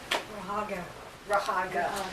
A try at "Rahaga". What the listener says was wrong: Not Rahagi, Rahaga. So it's Rahaga, thank you.